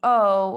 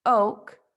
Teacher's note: if we are producing the phoneme o in the word oak the tongue is rounded and it is at a mid back tongue position